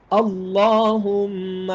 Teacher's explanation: لفظ اللہ کے لام کو ایک الف کے برابر لمبا کرنا یہ ضروری ہے